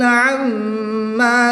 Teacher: میم ساکن کے بعد دوسری میم ہے تو یہاں پر ادغام شفوی ہوگا، یہاں پر بھی غنہ کر کے پڑھیں گے. میم مشدد میں ہمیشہ غنہ ہوتا ہے